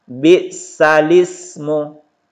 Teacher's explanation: Jadi cara membacanya, naqal berarti memindahkan, teman-teman sekalian. Yaitu memindahkan harokat hamzah, ini yang berharokat ini hamzah i, kepada huruf sebelumnya menjadi bisalismu.